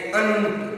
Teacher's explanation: अनुस्वार का उच्चारण नाक से किया जाता है। इसका चिन्ह शिरोरेखा के ऊपर बिंदु के रूप में लगाया जाता है, जैसे अंत, नाक से उसका उच्चारण होता है।